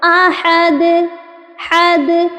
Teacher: light سے آپ نے ٹچ کر کے فوراً اپنی زبان کو ہٹا لینا ہے دال کے مخرج سے